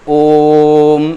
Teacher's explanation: ओम ऐसे करके उच्चारण किया जाता है। मतलब यह हम ओ का उच्चारण थोड़ी ज्यादा देर तक करेंगे। तब वह प्लुत स्वर माना जाएगा।